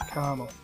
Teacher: I guess it would be closer to caramel but you know with my um Boston accent the r r sound tends to drop out in the middle of syllable